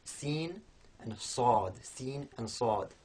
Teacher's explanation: So whereas sin is quite light, we have sad, which is heavier, and the way that heaviness is produced is that the front of the tongue is in contact with the same point of the mouth in both sin and sad, but for the sad that contact is harder, and also the back of the tongue is raised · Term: emphatic version of sin